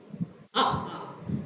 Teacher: तो देखिए जो हमारा आ है, आ, ये किससे बोला जाता है, कंठ से